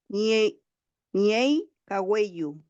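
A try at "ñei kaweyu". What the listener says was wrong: falta un poquito, sí, falta un poquito mejorar la primera parte, la primera pronunciación. Ñey, ñey. Ñein, ñein, ¿cierto?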